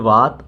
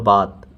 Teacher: ऊपर वाले दांतों के बाहरी हिस्से को जब निचले ओठ का भीतरी भाग स्पर्श करता है तब व की ध्वनि निकलती है पर ब का उच्चारण दोनों होठों के जुड़ने पर होता है यानी ब का जो है उच्चारण दोनों ओठों के जुड़ने पर